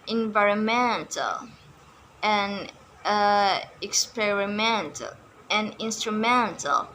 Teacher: The stress is not on the third syllable but on the fourth syllable.